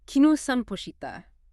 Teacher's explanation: instead of adding ka at the end, you just use a rising intonation, just like we often do in English.